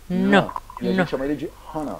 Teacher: C'est le ne cérébral. La langue touche le palais.